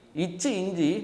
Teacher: இச்சு இஞ்சி நாவின் இடை, அன்னத்தின் இடை.